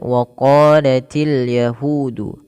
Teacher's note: Untuk huruf qof e di sini kita panjangkan dua harakat karena ia ada bacaan mad thabi'i · untuk huruf qaf sendiri, tebalkan dia sambil kita buka rongga mulut kita karena untuk itmamul harakat, untuk menyempurnakan daripada membunyikan fathah.